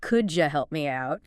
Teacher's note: Sometimes sounds blend together like the D and Y and could you making a J sound